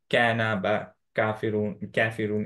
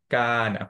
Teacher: কায়ের ক্ষেত্রে একটা জিনিস আমি বলি, ইনক্লুডিং মি, এটা অনেকেরই হয়, যে আমরা যেটা ইমালার কনসেপ্টটা বলেছিলাম, যে কা যখন বলবো, যে কোনো ফাতহা বলবো, আ এই উচ্চারণ হতে হবে, এ যাতে না হয়